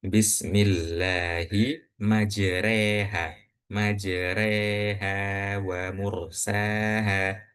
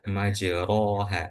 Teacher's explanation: Imalah miring sehingga ro fathah dibaca re dan tipis